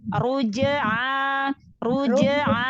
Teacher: lalu harokat fathahnya itu udah al-jauf, udah huruf A, bukan huruf ain lagi.